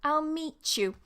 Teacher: So whenever you get a ta and a ya sound together, it makes a cha. This can happen, this can happen in words or it can happen between words.